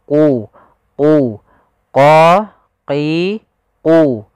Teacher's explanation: agar kita membacanya agak tebal untuk membedakan antara huruf q dengan huruf Kaf huruf q pangkal lidah kita harus kita angkat sehingga dia makhraj